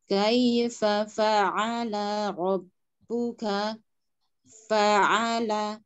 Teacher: fa'ala huruf ain ya berada di rongga tenggorokan bagian tengah ya.